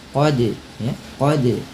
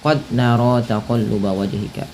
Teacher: Pantulkan bunyi suara huruf dal ketika ia berharakat sukun. Pada lafal qad ada huruf dal yang berharakat sukun. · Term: qalqalah